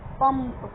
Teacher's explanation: पंप में म की ध्वनि आ रही है